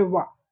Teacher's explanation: नीचे के ओष्ठ जो हैं ऊपर के दांतों को जब स्पर्श करते हैं तो उन्हें हम दंतोष्ठ कहते हैं, जैसे वा। तो जब वा का आप शुद्ध उच्चारण करेंगे तो ये जो नीचे के ओठ हैं ऊपर के दांतों को स्पर्श करेंगे।